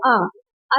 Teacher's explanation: एक विवत होता है जिसमें कि आप जब बोलते हैं तो उच्चारण करते हैं तो पूरा मुह खुलता है